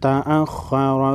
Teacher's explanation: خا ساکن پر خا حروف مستعلیہ میں سے ہے، موٹا پڑھیں گے